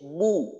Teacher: একেবারেই ঠোঁট গোল হয়ে যাবে, ঠোঁটের গোলের ক্ষেত্রে কোনো কমতি করব না। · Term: পেশ